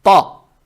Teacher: Далее стоит буква та, она твердая с фатхой. Фатха приобретает оттенок о. То есть та.